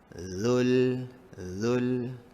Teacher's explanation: ingat hujung lidah mesti keluar sedikit. Zul, langsung ke dalam alif lam komariah.